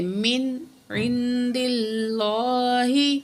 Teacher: غنہ نہیں کرنا، نون کو صرف ظاہر کر کے پڑھیں گے. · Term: اظہار